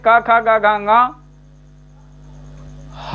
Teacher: क ख ग घ ङ ह और विसर्ग ये सब कंठ ध्वनियां कही जाएंगी, कंठ ध्वनि।